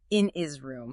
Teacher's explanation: In some UK accents, the H sound is frequently dropped in words like his or her when they're unstressed and linked. So in his room becomes in is room.